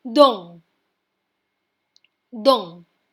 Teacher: This word also ends in a consonant which is T. That's why we do not pronounce the T and end at EN. N will give a little sound from the nose.